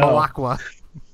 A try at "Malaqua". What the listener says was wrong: Nope. No. Softer on the end. You're putting the emphasis on the wrong syllable. Malaqua.